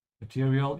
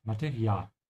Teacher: Make sure to pronounce it like the German A with an open A. Open your mouth wide, don't say material.